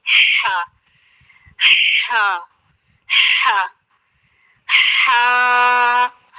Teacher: ہا اور عین یہ درمیانی حلق سے ادا ہوتے ہیں، اس کو کہتے ہیں حلقہ وسطی۔